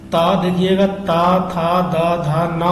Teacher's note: ता, था, दा, धा ना बोलने पर आपकी जीभ दांत को छूती है। आप बिना दांत में छुए अगर बोल रहे हैं तो गलत उच्चारण कर रहे हैं।